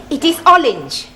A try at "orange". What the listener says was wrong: You really must work at those R sounds.